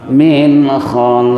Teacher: qafnya qalqalah kubra karena di akhir kalimat